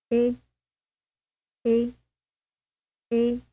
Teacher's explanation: it is pronounced with a mouse relatively closed and pulled back tightly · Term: vowel eight